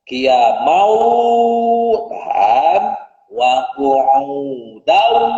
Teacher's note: Karena tanwin ketemu huruf waw itu masuk hukum tajwid, yaitu idgham bi gunnah. Maka wajib ditahan huruf wawnya.